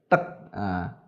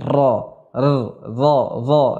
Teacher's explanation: Huruf ro ketika kita mengucapkan ya lidah ya tatkala menyentuh gusi seakan-akan menyentuhnya berulang. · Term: at-takrir